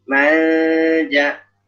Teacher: Misalnya jim nah, jadi dia ikhfa itu kan kita persiapan pada huruf setelahnya, jadi juga menyesuaikan makhraj huruf setelahnya. Karena jim itu di tengah lidah namanya awsat, tengah kan, atau wusta, maka bunyi ikhfanya juga menengah.